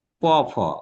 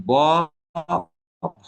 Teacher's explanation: প ফ কাঁপছে না, কিন্তু ব ভ যখন বলো তখন সাউন্ডটা একটু আরো কেমন যেন ভরা গলায় হচ্ছে, এবং স্বরতন্ত্রী যেটা সেটি কাঁপছে